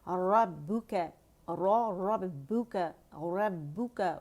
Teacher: را تفخیم کے ساتھ ہے اور با باریک ہے, اس کے ساتھ با کو موٹا نہیں کریں گے